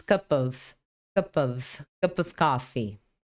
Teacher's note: o som do P ligou com o som do O e você diz cup of coffee